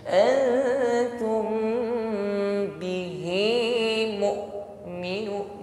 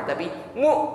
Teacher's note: Tertutup makhrajnya sehingga suara hamzah ini tertahan.